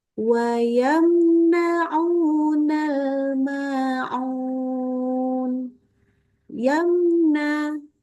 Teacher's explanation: huruf nun ini sekarang ngomongin mim sukun kalau tapi ketemu Nun maka mim sukunnya kita baca dengan izhar nunnya juga dibaca jelas ya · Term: idhar